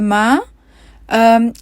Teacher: اس حرف کا مخرج ہے دونوں ہونٹ۔ حرف میم کی ادائیگی کرنے کے لیے آواز ہماری ناک سے بھی نکلتی ہے، جس کو غنہ کہتے ہیں۔ تو آپ اپنے دونوں ہونٹوں کو جب آپس میں ملاتے ہیں تو پھر آواز جو ہے وہ ناک سے جو نکلتی ہے وہی غنہ ہے۔